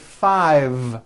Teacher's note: I said five with a voiced V